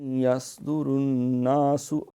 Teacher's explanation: صاد ہے، یہ موٹی سیٹی ہے